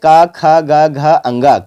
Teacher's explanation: उच्चारण के स्थान पर बात करें तो कंठ से बोली जाती है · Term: कवर्ग